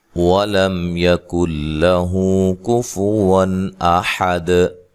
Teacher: واو کو ادا کرتے ہوئے ہونٹوں کو گول کرنا ہے، لام کو موٹا نہیں پڑھنا اور لمبا بھی نہیں کرنا، لام کو موٹا ادا نہیں کرنا، ٹھیک ہے جی۔